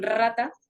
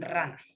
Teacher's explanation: la lengua toca rápidamente el paladar el aire provoca vibraciones al pasar por los órganos articulatorios por ejemplo la r en rata o la r en rana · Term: vibrantes